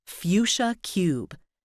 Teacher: there's a double diphthong where the vowel comes between 2 semivowels